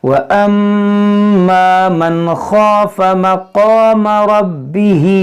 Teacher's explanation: میم مشدد میں غنہ کریں گے